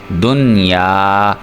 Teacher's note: ہم نے غنہ نہیں کرنا، اس لیے ہی تو اس کو اظہار مطلق کہتے ہیں کہ ہم نے اظہار کرنا ہے، غنہ نہیں کرنا۔